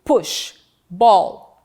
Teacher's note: Na articulação de P e B, a corrente de ar, no primeiro momento totalmente bloqueada pelos lábios. antes de ser posteriormente liberada pela boca. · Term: oclusivas